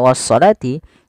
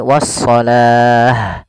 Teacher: Tapi karena kita waqaf, maka di sini awalnya kalau dia ada huruf ta marbutah seperti ini, awalnya was-salati, Kalau kita waqaf dia kita ganti dengan huruf ha yang disukunkan. Maka menjadi wassalah.